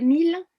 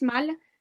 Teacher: Une de ces paires était 1000 VS mâle, dans laquelle on visualise parfaitement bien les consonnes initiales et finales semblables et une variation vocalique, IA, qui s'explique phonologiquement par un certain degré de différence d'aperture, fermé, ouvert